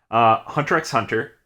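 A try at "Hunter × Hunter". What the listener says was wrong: it's Hunter. Yeah, no X. Hunter. It's Hunter. There's no X. You don't say the X in Hunter. For someone who worships Togashi so much, Togashi has outright said that.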